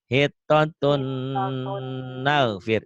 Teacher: Dibacanya N-nya hilang. Tapi hilangnya nggak kelihatan ya, karena masuk N lagi. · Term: Idgham diguna